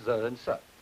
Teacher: They can be voiced and voiceless of course z and s.